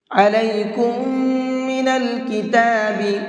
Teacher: علیکم من الکتاب، کم کے اندر غنہ کریں گے، اس لیے کہ یہاں پر میم ساکن کے بعد میں ایک اور میم ہے۔ جب کبھی بھی 2 میم ایک ساتھ آتے ہیں تو پہلے میم کو ساکن کر دیتے ہیں، یعنی کہ ان دونوں کو مکس کر دیتے ہیں، اور وہاں پر ساتھ ساتھ غنہ کر کے پڑھتے ہیں۔